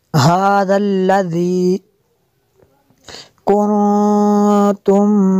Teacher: نون ساکن کے بعد تا ہے حروف اخفاء میں سے، تو یہاں پہ غنہ کیا، اخفاء ہوگا۔ اسی طرح میم ساکن کے بعد با ہے تو یہاں پہ اخفاء شفوی ہوگا۔